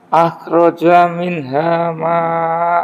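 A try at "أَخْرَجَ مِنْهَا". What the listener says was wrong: Ahnya getarkan, Pak. Ngorok.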